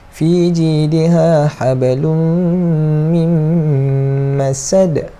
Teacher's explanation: Lepas tu kat belakang ni dal yang kita wakafkan. Bila kita wakafkan dal ni, jadi ada lantunan juga, sebab huruf dal ni termasuk dalam huruf qalah.